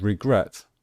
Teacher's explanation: With regret, we stress the last syllable, the final syllable.